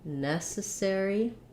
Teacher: for necessary we have first syllable stress